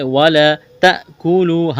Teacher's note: حمزہ ساکن ہے، تا کو حمزہ کے ساتھ ملانا ہے، جھٹکا دیں گے